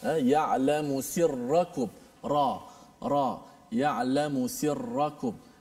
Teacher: Juga pada ra, ya'lamu sirrakum, ra ya'lamu sirrakum. Cuma ra, inhiraf pada ra ini, lencong pada ra sedikit saja berbanding lam.